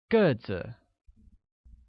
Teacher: pronounced with a falling tone on e